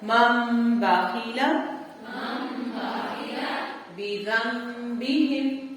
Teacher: یہ اس کی مثال ہے, جیسے چھوٹا سا میم بنا ہوگا, جب بھی نون ساکن کے بعد با آئے گا تو یہاں آدھا غنہ ہوتا ہے. مم بخیلا بذنبہم.